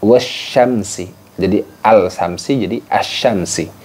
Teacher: bunyi alnya itu dimasukkan ke huruf setelahnya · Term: alif lam syamsiah